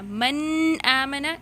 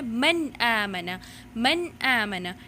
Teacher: اس کا یہ مطلب ہے کہ آواز کو آپ نے directly from the mouth پروناؤنس کرنا ہے. ان ورڈس کو جب آپ پروناؤنس کریں گی تو آواز ڈائریکٹلی فرام دا ماؤتھ آنی چاہیے, right, not from the nose. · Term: اظہار